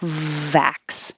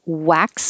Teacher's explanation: starts with your top teeth behind your bottom lip